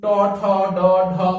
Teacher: একইভাবে ট, ঠ, ড, ঢ, মূর্ধন্য এই সকল ধ্বনি উচ্চারণের সময় জিহ্বা মূল মূর্ধা স্পর্শ করছে